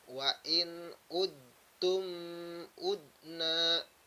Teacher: Maka cara membacanya harus diidghamkan juga. Memasukkan huruf dal kepada huruf ta.